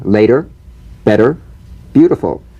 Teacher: the medial T becomes a soft D alright it's not a complete D but it goes toward a D